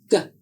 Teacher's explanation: To make the sound of the letter G, /g/ air is blocked by the back of the tongue against the roof of the mouth. No explosion of air is made, but air and voice are used to make the sound. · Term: hard sound